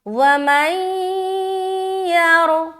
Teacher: یہاں پر ہم نے ادغام ناقص بھی کیا، اس کے بعد را کو موٹا بھی کیا